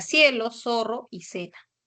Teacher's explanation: la letra c y z que representan a la fricativa interdental sorda